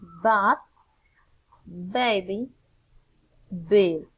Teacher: Also, the sound is voiced, that is to say that it is a vibrate sound. The vibration begins at the vocal cord, and it also feels between the lips.